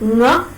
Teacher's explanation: And Ng is a nasal sound. So, it's a voiced, velar, nasal.